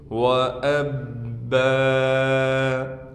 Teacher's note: وَفَاكِهَةً وَأَبًّا، حمزہ کو با سے ملانا ہے، با پر تشدید ہونے کی وجہ سے تھوڑا ٹھہراؤ کریں گے، با پر 2 زبر ہونے کی وجہ سے جب 2 زبر پر وقف کیا جاتا ہے تو پھر 2 زبر کو ایک زبر سے بدل دیں گے اور اس کو پھر ایک الف کی مقدار کھینچیں گے